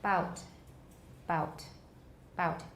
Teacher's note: We have voicing only at the beginning of the vowel. 直到那个 vowel 那个点开始才有 voicing.